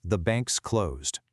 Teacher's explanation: The NKS from banks links right up to the CL of closed, and suddenly you have a five-consonant chain, nkskla. Let's build this up.